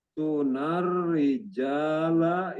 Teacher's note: Tunar rijala ini ro bertasjid, dibaca jelas dan mendapat penekanan.